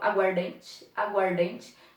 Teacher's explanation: Vocês perceberam que houve aqui, houve aqui uma aglutinação, uma junção. Nós não temos um A sendo pronunciado, eu não falo água ardente, eu falo aguardente